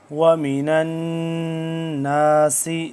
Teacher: وَمِنَ النَّاسِ، نون زبر نن، نون علی زبر نا، نون ہے یہاں پہ مشدد تو اس پہ ہم غنہ کریں گے